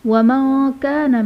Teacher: نون ساکن کے بعد حروف اخفا میں سے کاف آ رہا ہے تو یہاں بھی اخفا کا قاعدہ ہوگا، یعنی نون ساکن میں غنہ کر کے پڑھیں گے